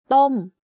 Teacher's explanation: my pitch goes up and slightly down by the time i finish saying the word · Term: falling tone